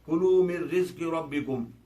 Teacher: اب دیکھیے یہاں پر بھی من رزق تھا مگر نون کی آواز جو ختم ہوگی اور کیا ہو گیا ڈائریکٹ میم رے سے جا کے ملا مر رزق ہو گیا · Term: ادغام کامل